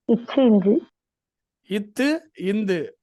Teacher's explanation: மேல்வாய் பல்லின் அடியை நாக்கின் நுனி பொருந்துவதால் பிறக்கும் எழுத்துக்கள்